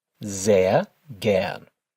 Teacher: Notice how the S at the start of that sentence is pronounced with a Z sound.